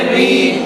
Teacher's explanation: اچھا حضرت آپ یہ ارشاد فرمائیے کہ یہ ری کو موٹا پڑھیں گے یا باریک پڑھیں گے؟ یہاں پر را کے نیچے زیر ہے اس لیے را کو باریک پڑھیں گے.